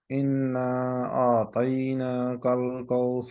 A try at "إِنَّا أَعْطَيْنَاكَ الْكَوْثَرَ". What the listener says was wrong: کا غنہ ابھی ٹھیک نہیں ہے، ये देखें इन दोनों जगह पे आपने इसको लंबा करना है, इन, ठीक है, दोनों जगह पे।